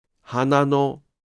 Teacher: In “花の” (hana-no), the pitch of “の” does not drop.